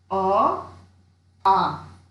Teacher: इसके उच्चारण में जिह्वा का मध्य भाग अधिक सक्रिय रहता है, इसलिए इन्हें मध्य स्वर कहते हैं।